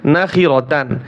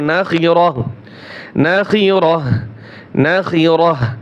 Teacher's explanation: গোলতা ওয়াকফের সময় হা উচ্চারণ হয়।